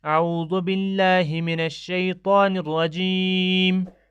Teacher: ہم نے میم پر وقف کیا تو زیر کو ہم نے گرا کر جزم دے دیا